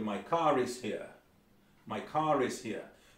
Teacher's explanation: az R hang után jön egy magánhangzó valahol, nem a szóban, a következő szó elején